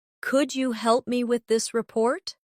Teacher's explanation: Pay attention to the stress. The words help and report carry more weight in the sentence.